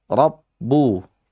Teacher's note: Ranya tafkhim karena dia fathah.